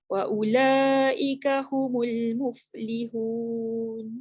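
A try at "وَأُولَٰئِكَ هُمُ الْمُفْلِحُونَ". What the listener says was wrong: Wa ula tu 4 harakat paling kurang.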